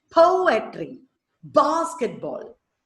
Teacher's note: Examples, poetry, poetry, 3 syllables. Po, the first syllable is stressed. That is dactyl.